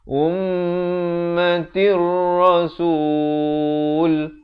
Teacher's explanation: Ummatir di sini idgham bila gunnah, daripada ummatin jadi izhar, jadi idgham bila gunnah di sini masuk tanpa dengung